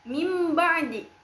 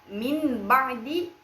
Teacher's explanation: Nah, contohnya itu ada pada kalimat mim ba'di yang asalnya min ba'di menjadi mim ba'di. Apabila nun bertemu dengan huruf ba menjadi iqlab dan diubah menjadi mim.